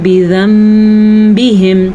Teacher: نون ساکن کے بعد جب با آ جائے تو نون ساکن میم میں بدل دیتا ہے